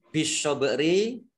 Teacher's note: langsung masuk ke huruf berikutnya yaitu shot, ditandai dengan ada tasdid, shotnya dibaca double. Bak sukun bacaan kolkolah, dibaca memantul.